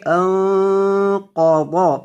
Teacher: نون پر گنہ ہوگا، اور قاف کو موٹا کریں گے قا، انق، اور قوت کو بھی موٹا کریں گے انقض۔